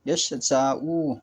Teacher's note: হরকতযুক্ত ইয়া। এই ৩টি বর্ণ জিহ্বার মধ্যস্থল ও ওই বরাবর উপরের তালু হতে উচ্চারিত হয়। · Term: জিম, শিন, ইয়া